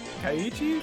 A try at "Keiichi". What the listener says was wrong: Keiichi. It's an E, not an A.